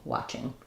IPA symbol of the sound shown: ŋ